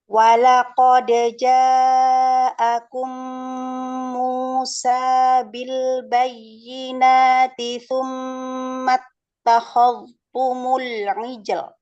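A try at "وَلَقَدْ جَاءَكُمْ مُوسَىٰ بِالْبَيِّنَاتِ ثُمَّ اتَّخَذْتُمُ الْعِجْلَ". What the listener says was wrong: Walaqad, dalnya majukan lagi, titik makhrotnya, ujung lidahnya. Monyongin lagi wawnya ya.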